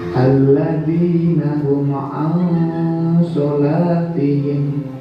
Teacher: Huma kita baca jelas karena ada mim sukun bertemu ain. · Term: idhar syafawi